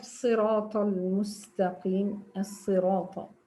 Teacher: The natural occurrence of a whistle-like sound emitted while pronouncing the letter sad. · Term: safir